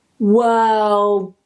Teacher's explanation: They're not two separate sounds, let's say. Hold that L and then release it as a duh. World. So notice I'm not saying world.